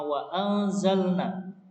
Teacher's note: Ini adalah nun ketemu za, adalah bacaan ikhfa, dibaca samar